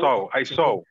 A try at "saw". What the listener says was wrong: Saw. Okay, saw. It's not a, it's not o, but it's in the middle of a and o. Saw. Not saw, there is no u, there is no u at all. Saw. So, between a and o. Saw.